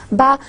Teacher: this is somehow the plosive sound, because when I say ba, a puff of air is with it. So again, another feature of this sound is it is plosive.